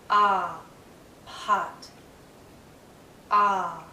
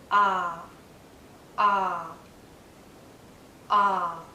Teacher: relaxed but my my mouth is in a very open position my tongue is low inside my mouth low and a bit forward so that the tip does touch the back of my bottom front teeth